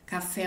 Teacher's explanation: e o fé é a minha sílaba tônica e a minha outra sílaba é a minha sílaba átona vai